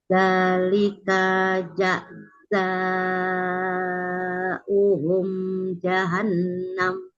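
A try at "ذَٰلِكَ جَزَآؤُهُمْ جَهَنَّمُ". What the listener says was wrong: Zalika jaza, kayaknya jangan diayun. Zalika jazauhum jahannam.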